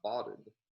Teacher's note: in this context between the two coronal stops, there is epenthesis